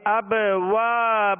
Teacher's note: واو کے ساتھ الف مدہ ہے، اس کو ایک الف کی مقدار کھینچیں گے